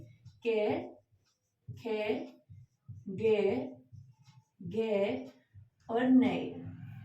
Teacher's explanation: जो आपका कवर्ग है वो कंठ से बोला जाता है